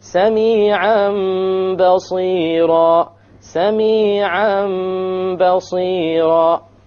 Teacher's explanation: We change the Tanween into a meme, and that is called إقلاب.